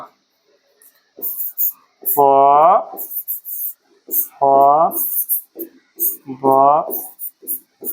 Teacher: तो पवर्ग का उच्चारण कहाँ से होता है, ओष्ठ से होता है। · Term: ओष्ठ वर्ण